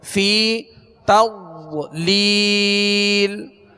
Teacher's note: ضاد کے اوپر جزم ہے، سکون ہے، اس کو جماؤں کے ساتھ مضبوطی کے ساتھ ادا کریں گے کہ سکون ہلنے نہ پائے